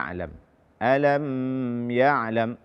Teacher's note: menahan suara pada mim sukun pada kata alam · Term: Izhar Syafawi